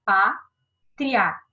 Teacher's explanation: O A é sempre vogal, o I vai ser minha semivogal. O som passa do mais baixo para o mais alto. Então, ele, ó, cresce. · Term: ditongo oral crescente